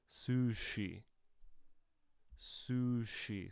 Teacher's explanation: This is a continuous consonant, similar to v, but now we have it as sh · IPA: /ʃ/